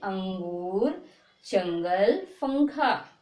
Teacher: का वर्ग के चार जो अक्षर हैं वो अगर अंक की मात्रा के बाद आए, ठीक, तो उसका उच्चारण अंग करके बोलते हैं